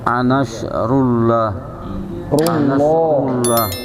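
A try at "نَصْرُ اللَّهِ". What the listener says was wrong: Bukan rullah, tapi bacanya jadi tebal. Lafaz Allahnya masih rullah tadi.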